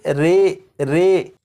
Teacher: یہاں پر لکھا ہے امالہ، زبر کو زیر کی طرف اور الف کو یا کی طرف مائل کر کے پڑھنے کو امالہ کہتے ہیں۔ امالہ کی راء کو اردو کے لفظ قطرے کی راء کی طرح پڑھیں گے، یعنی ری نہیں بلکہ رے پڑھیں گے